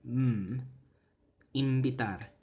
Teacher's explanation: that nasal consonant change to the bilabial